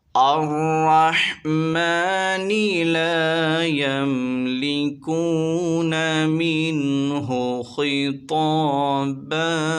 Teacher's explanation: ناظرین را پر زبر ہے، اسے موٹا پڑھیں گے